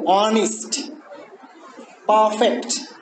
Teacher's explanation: both of which end with strong syllables but are stressed on the first syllable. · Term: exceptions